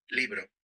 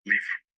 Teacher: Spanish doesn't really have a V sound. It does have the soft B, which kind of sounds similar to a V, but Portuguese has a distinct V sound.